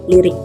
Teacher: fonem I pada suku pertama kata lirik sebenarnya berada pada suku terbuka, namun dilafalkan juga sebagai bunyi I kapital